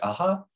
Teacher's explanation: the vocal folds are going to be widely spread there's going to be a big gap between the folds and no squiggly lines suggesting no voicing at all and then · the vocal folds are more widely spread apart because the glottis is opening and so that's this increased space that we · the vocal folds are more spread apart than they would be for the modal vowel and breathiness uh ensues so breathiness here is represented with a squiggly line in blue